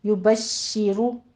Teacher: युबश्शिरु रो मुफ़ख्खम हो जाएगी